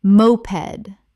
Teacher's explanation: Moped, the vehicle, stress on first syllable.